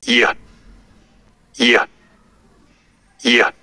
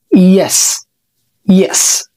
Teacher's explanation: بتقرب اللسان من سقف الفم بتقول اي ياء وزي ما انت شايف مش بيحصل اغلاق كامل للفم انت بس بتخلي الهواء يخرج كده من فوق اللسان بدون اي عائق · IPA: /j/